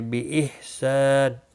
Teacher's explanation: ہا ساکن کو ہلانا نہیں، سا الف مدہ ہے، 1 الف کے برابر کھینچ کر پڑھیں گے